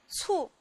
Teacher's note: 它是一个平舌音，声母是▁“ts”